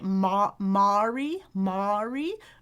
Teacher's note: They'll say /ɑ/ as in box. They'll say, /mɑ/ /mɑri/ /mɑri/ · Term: back vowel